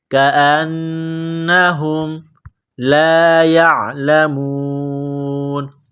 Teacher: نون مشدد ہے غنہ کریں گے، آواز ناک میں چھپائیں گے ، ہا کو میم کے ساتھ ملانا ہے، کاف کو باریک